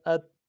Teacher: اگلا لفظ جو ہے یہ تا ہے۔ تا نرمی سے پڑھیں گے، اس میں کوئی جنبش نہیں ہوگا، کوئی اس کو قلقلہ نہیں کریں گے۔ حمزہ تا زبر ات، آواز بند ہو جائے گی۔